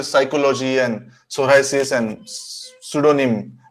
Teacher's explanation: We don't even make attempt to even slightly pronounce the p.